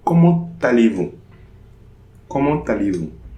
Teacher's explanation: So here there will be a liaison between the T and the A. And this is the only expression starting with an interrogative adverb where we are going to have this liaison.